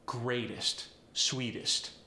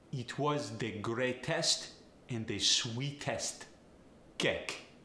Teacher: the EST sound in America we often transform it to an IST sound